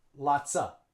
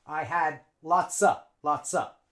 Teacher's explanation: Native English speakers don't pronounce of. They just use schwa, lots of. And they link it on to lots.